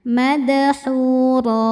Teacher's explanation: Cara bacanya dipanjangkan 2 harokat tanpa bunyi n. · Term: mad iwad